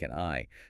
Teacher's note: the D elides with the vowel. It's a perfect illustration of how the sound that comes after a word can change how the end of that word is pronounced.